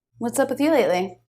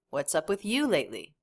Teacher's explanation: stressed word in that sentence what's up with you lately you the peak of that sentence is you